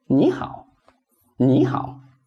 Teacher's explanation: we make the first third tone into second tone.